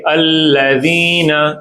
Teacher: جب بھی ذال آتا ہے زبان کی نوک کہاں لگتی ہے؟ شاباش. دانتوں کی کناروں سے لگتی ہے. دانتوں کی نوک ایسے رہتی ہے.